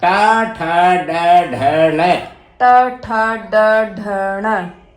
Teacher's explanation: तालु से आगे दांत से पीछे एक खुरदरी जगह होती है उसको मूर्धा बोलते हैं। तो ये जब हम टैवर्ग का उच्चारण करते हैं वो मूर्धा से होता है।